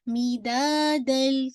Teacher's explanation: क्या है, ये आपका इदगाम है लेकिन कामिल है, कंप्लीटली तनवीन की आवाज लाम के अंदर मर्ज हो गई है , ठीक है, तो इसीलिए दन की आवाज नहीं आ रही